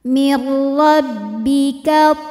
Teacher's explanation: dibaca secara tafkhim karena berharakat di atas yaitu fathah ya makanya tebal